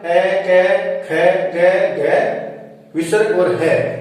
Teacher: इनका उच्चारण स्थान होता है दोस्तों कंठ